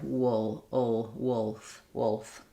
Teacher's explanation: We don't make a strong L there, not wolf with a strong L, but it is there. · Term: dark L